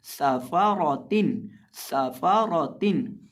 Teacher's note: और इसी तरह रॉ को हम यहाँ पुर करके पढ़ेंगे और सीन के अंदर हम सीटी की आवाज़ पैदा करके पढ़ेंगे · निचले होंठ का वस्त जब सामने वाले ऊपर के दो दांतों के किनारे से लगेगा तो फ़ा अदा होगा, ये फ़ा का मखरज है।